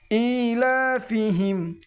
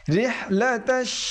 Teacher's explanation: বড় হায় একটা গরম বাতাস বের হবে আর ছোটো হায় একটা নরম বাতাস বের হবে